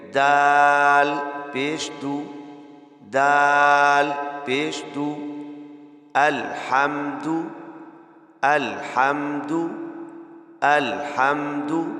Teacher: تو دال کے اوپر چونکہ پیش ہے اس لیے ہم ہونٹوں کو گول کر کے ادا کریں گے